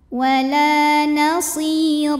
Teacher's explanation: huruf ra dibunyikan secara tafkhim karena berbaris di atas, maka bacanya tebal. Ra apabila berhenti ada hukum mad yang dinamakan dengan mad iwad, karena ada baris tanwin fathah yang diwaqafkan.